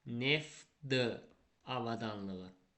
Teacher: tələffüsdə neftdəki t d-ya çevriləcək